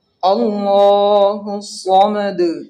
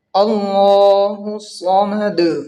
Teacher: لفظ اللہ کا جو لام ہے یہ پر ہوگا اور ہا کو صاد میں ملائیں گے اور صاد کو بھی موٹی آواز سے پڑھیں گے، اس لیے کہ صاد حروف مستعلیہ میں سے ہے، اور دال میں قلقلہ ہوگا جو کہ پچھلے آیت میں بتا دیا تھا میں۔